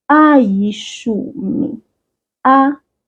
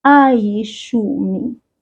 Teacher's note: because the second vowel is I, we will separate these 2 vowels with Y, the sound Y. Y. Now we have ayishumi.